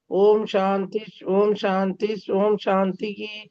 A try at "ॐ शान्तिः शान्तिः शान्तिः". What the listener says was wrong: மூணு வாட்டி ஓம் ஓம்ங்க வேண்டாம். ஓம் சாந்தி சாந்தி சாந்தி.